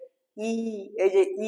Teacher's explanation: ই উচ্চারণ করার সময় আমাদের ঠোঁটগুলো প্রসারিত হচ্ছে